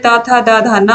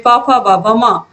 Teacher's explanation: त वर्ग का दंत और प वर्ग का ओष्ठ